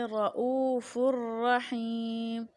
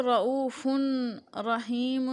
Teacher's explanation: ہم اس کو بغیر غنہ کے اس فا کو را کے ساتھ ملا کر پڑھ رہے ہیں